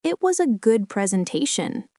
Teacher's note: a falling rising intonation can indicate doubt · the rise and fall implies it was good, but I have reservations